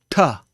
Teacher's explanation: you say by putting your tongue at the roof of your mouth and then having a plosive sound come out